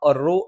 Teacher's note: റു എന്ന് പറഞ്ഞാൽ തഫ്ഹീം എന്ന രീതിയിൽ നമ്മൾ കനപ്പിച്ചു ഉച്ചരിക്കും